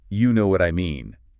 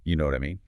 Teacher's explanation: if you say you know what I mean with a rising tone at the end like a question, you're genuinely asking for confirmation